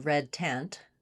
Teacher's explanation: Looking at vowel e as in red tent, we typically spell it with letter e. It's a lax central front vowel. So it lies in between our other two lax vowels. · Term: red tent vowel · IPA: /ɛ/